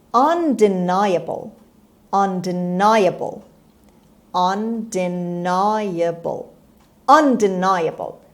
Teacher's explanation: the stress is on the third syllable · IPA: /ˌʌndɪˈnaɪəbəl/